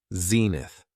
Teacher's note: It has 2 syllables, and the stress is on the first syllable